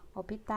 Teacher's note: Então, optar, a sílaba tônica vai ser o que? O tar.